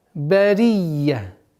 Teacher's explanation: Б, ра с касрой, я с удвоением. С фатхи уходим на та марбуту, которая аннулируется огласовка и сама буква, и переходит в звук ха.